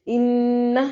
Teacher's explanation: انہ نون شدت پہ غنہ ضروری ہے